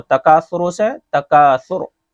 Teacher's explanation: جب ہم وقف کر رہے ہیں تو وقف کی حالت میں پیش کو کیا کرتے ہیں؟ ساکن کر دیتے ہیں